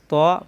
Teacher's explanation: ত জিহ্বার আগা উপরের দাঁতের গোড়ায় লাগিয়ে উচ্চারণ করতে হয়